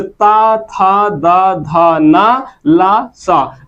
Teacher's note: ता था दा धा ना ला सा, और इन सभी का उच्चारण स्थान क्या है? दंत है।